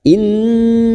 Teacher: Nun yang bertasdid gunna mustaddadah kita dengungkan, kita tahan selama 3 harokat.